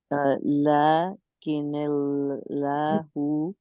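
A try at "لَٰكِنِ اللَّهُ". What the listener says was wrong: نہیں تھوڑا لام موٹا ہو رہا ہے، موٹا تو صرف فتحہ کے ساتھ ہوگا. لیکن اللہ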